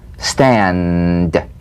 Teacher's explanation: play this d drum beat on the springing away of the tongue from the upper gum ridge feel a pulsation in the tongue tap the drum beat d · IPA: /d/